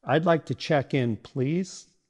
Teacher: emphasizes please, which adds politeness or urgency depending on your tone